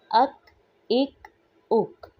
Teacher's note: کاف ہے، جو سخت تالو کے حصے سے ادا ہوگا، اور قاف کی نسبت اسے باریک پڑھیں گے. جیسے کاف. · کاف میں بھی ہمس پائی جاتی ہے